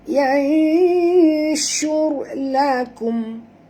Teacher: Okey, huruf shim jaga makhraj, dan ra ini bila dia mati tebal tuan-puan, kerana huruf sebelumnya baris depan